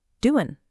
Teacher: the end of doing, the G sound, is often dropped, so it's doin'.